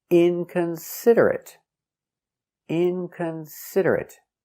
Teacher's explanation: Stress on the first syllable and third syllable.